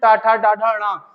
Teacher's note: फिर टा, ठा, डा, ढा, ड़ा, तो जीभ पूरी मूर्धा पे स्टार्टिंग वाले पॉइंट से लेके एंड पॉइंट तक जाएगी